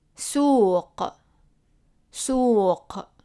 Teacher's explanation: Remember, it's like a q, but pronounced in the back of the throat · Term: qaf